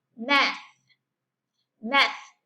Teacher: TH al final de las palabras, in the ending position, is silent or is with no vibration